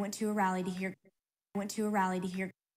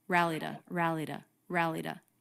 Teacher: it's more of a flap t and then the vowel is the schwa